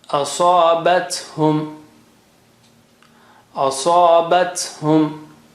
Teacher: sa is very thick and high.